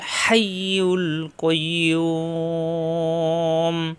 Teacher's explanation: হা সাফ হবে, ইয়া জিব্বার মাঝখানে উপরে তালুতে চাপ দিয়ে, ক জিব্বার গোড়া থেকে